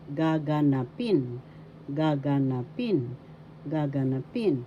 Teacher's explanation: the fourth syllable has the accent, gaganapin.